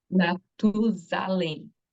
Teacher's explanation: the S is between two vowels. And so the S makes a sound of Z.